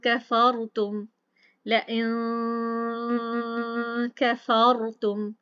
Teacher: नून साकिन की आवाज हमारे नाक में से आ गई है, इख्फा हो गया, इसी को इख्फा कहते हैं। हमने उसको छुपाया है, नून साकिन की आवाज को किस में छुपाया, अपने नाक में।